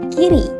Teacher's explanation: membentuk lingkaran bibir tetap rileks dan tidak tertekuk atau membulat vokal Seperti i pada kata kiri dan e pada kata betul diucapkan dengan bibir dalam posisi Netral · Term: fokoid tidak bundar